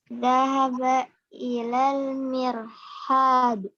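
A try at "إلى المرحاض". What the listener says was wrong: Ilal mirhadi ya, kasroh.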